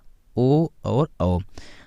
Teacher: कंठ द्वारा जीभ और ओठों के कुछ स्पर्श से बोले जाने वाले वर्ण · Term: कंठोष्ठ्य